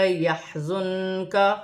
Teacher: نون ساکن میں اخفا ہوگا کیونکہ نون ساکن کے بعد حرف اخفا میں سے کاف ہے ، کاف باریک ہے، واو ساکن سے پہلے زبر ہے تو